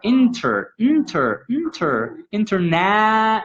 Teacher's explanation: i don't need that vowel in the middle between the t and the r